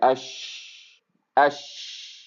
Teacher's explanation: شین کے کیس میں اتنی سپیس مل رہی ہے کہ آپ کی آواز آگے کنٹینیو ہو سکے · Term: رخاوہ